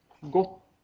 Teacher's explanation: är det en kort eh vokal och en lång konsonant och när man säger en lång konsonant så innebär det att man liksom håller inne den lite grann